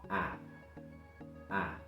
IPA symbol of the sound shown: æ